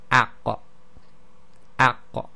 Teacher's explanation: Then we have the qaf, and this is the extreme back of the tongue touching the uvula. That's the dangly bit, most people call it, and it's all you have to do to get the sound of the qaf is to just move the tongue a bit back.